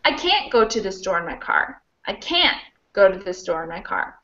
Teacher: i would stress can't and there's no way for me to reduce that or squish it away